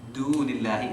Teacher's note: it's the tip of the tongue touching the top teeth